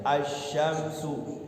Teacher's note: Kalau asyamsu ada alnya tapi enggak berbunyi, langsung ke sin. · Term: al samsiyah